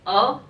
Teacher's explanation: मध्य स्वर में आपका छोटा आ, ठीक है, अ बोलोगे तो मध्य स्वर में आएंगे।